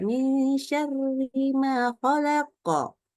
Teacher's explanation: Seluruh yang berharokat kasroh, ri itu pasti dibaca tipis.